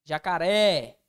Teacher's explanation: oxítona ou seja sílaba tônica recai sobre a última sílaba